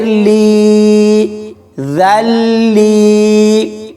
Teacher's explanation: لام کو یا کے ساتھ ملائیں گے اور یا مدہ ہوگی، تو اس کو کھینچ کر پڑھیں گے